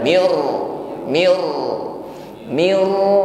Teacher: Irti'adu taraful lisan, tetap ada getaran di situ, getarannya tebal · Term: takrir